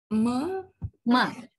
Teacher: Now, when you say ma, you can feel just like per, right? You use your both lips to fully block the airstream. That is why we call it a stop. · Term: nasal stop